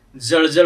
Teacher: इथं जळजळ मध्ये आपण ज चा उच्चार दंत तालव्य ज असा करतोय, ज सारखा करत नाही, परंतु जळ असा जर तालव्य उच्चार केला याचा तर याचा अर्थ पाणी होतो, याचा अर्थ पाणी होतो।